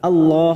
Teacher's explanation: lam jalalah yang didahului fathah Allah, maka kita baca tafkhim